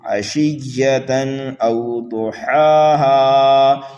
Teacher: حمزہ کو جلدی پڑھیں گے واو لین کی وجہ سے۔ حرف ضاد کو پر کر کے پڑھنا ہے، اور ہا کو ایک الف کے برابر کھینچ کر کے پڑھنا ہے۔